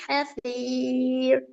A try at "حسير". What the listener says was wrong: ஹசீர் அந்த ராகம் பல ஏன் பல வஹுவ ஹசீர் இது சவுண்டு இர் இர் என்று போகக்கூடாது. ஓ ஹசீர் என்ற சின்னராவா? சரி இப்ப அடுத்து சின்னரா உச்சரிய கொள்ள நாவானது எங்க ஈக்கணும்? ஆ உச்சரி பாருங்க ஹசீர் எங்க ஈக்கணும்? முன்னுக்குன்னா எங்க? பின்னுக்கு. நாவானது பின்னுக்கு ஈக்கணும்ங்கிறது சரி. நாவினுடைய எந்த பகுதி படணும்? நுனிப்பகுதியா, அடிப்பகுதியா, கீழ்ப்பகுதியா, ஓரப்பகுதியா, மேல் பகுதியா? நுனிப்பகுதி பட்டா வல்லினம். வல்லினத்துக்கு எது படும்? ஆ, வல்லினத்துக்கு எது படும்?